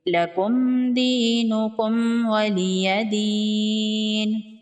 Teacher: یا مدہ ہے، 1 الف کے برابر کھینچ کے پڑھیں گے، وقف کی صورت میں نون کو ساکن کر دیں گے